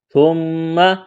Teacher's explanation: ثم، ثامیم پہ ثم، میم زبر ما، تا کو نرم کرنا ہے، میم مشدد پر غنہ کریں گے، آواز ناک میں چھپائیں گے